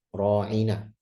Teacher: hati-hati ra'ina jadi ain ya, jangan jadi hamzah.